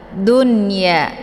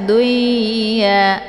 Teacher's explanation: maka ini nunnya dibaca jelas karena ini dinamakan dengan izhar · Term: idhar